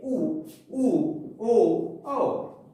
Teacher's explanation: वृत्तमुखी जिनके उच्चारण में ओठ गोलाकार होता है